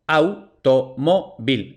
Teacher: Otra, automóvil, automóvil. Entonces, a, u aparecen juntas y las pronunciamos en el mismo golpe de voz, en la misma sílaba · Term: diptongo